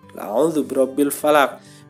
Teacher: Sebenarnya aslinya ada harokatnya, tapi karena posisinya ada di tempat berhenti ya atau waqaf, maka harokatnya hilang ya, harokatnya seperti tidak ada. Kemudian karena ini huruf qaf, salah satu dari huruf qalqalah, maka bacanya dipantulkan ya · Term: qalqalah kubro